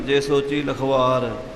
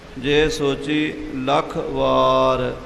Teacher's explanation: ਲੱਖ ਤੇ ਥੋੜ੍ਹਾ ਰੁਕ ਕੇ ਵਾਰ ਬੋਲਣਾ